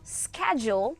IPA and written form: skɛʤʊl (schedule)